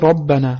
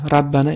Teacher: Va ikkinchisi bu ro harfi. Ya'ni ro harfini ustida ham fatha kelgan ra emas. Ro deb talaffuz qilinadi. Agar misol keltirsak, misol uchun robbana deb talaffuz qilamiz. · Ya'ni xo harfining ustida agar fatha belgisi bo'lsa, xa emas, aynan xo deb talaffuz qilinadi va ikkinchisi bu ro harfi, ya'ni ro harfining ustida ham fatha kelganda ra emas, ro deb talaffuz qilinadi